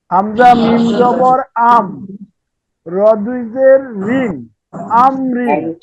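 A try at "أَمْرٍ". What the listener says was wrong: আলহামদুলিল্লাহ।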